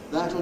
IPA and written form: ˈðætl (That’ll)